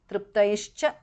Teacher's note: Triptaihi, visarga changes to shu there. Cha. Triptaischa because of sandhi.